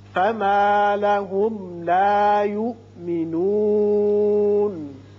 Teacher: اس میم پر اظہار شفوی ہوگا